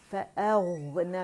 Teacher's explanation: गौइन जो है ये तफ़ख़ीम के साथ पढ़ा जाता है, इसमें इस्तिआला है, ज़बान में डिब बनेगी।